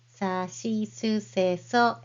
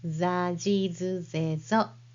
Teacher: So, sa, shi, su, se, so will be za, ji, zu, ze, zo with two dots. Dakten makes the unvoiced consonants to voiced consonants. So gently touch your throat while pronouncing the sagyo hiragana and compare it to the sound of zagyo hiragana. · When the dakten is added to sagyo hiraganas, sa, shi, su, se, so, the S changes to Z sound. So, sa, shi, su, se, so will be za, ji, zu, ze, zo with two dots.